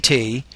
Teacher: One common mistake that I'll see with international speakers of English is they do not create enough airflow out of their mouth when they make this sound. So the T is an alveolar stop consonant. Make this sound without vibration of the vocal folds. For example, when you say T, place your index finger and your middle finger on your throat.